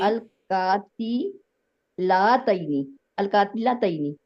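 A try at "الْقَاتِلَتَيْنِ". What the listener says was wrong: जी ल कहना है ना, ला क्यों कह रहे हो? अलकाती ल लतईनी।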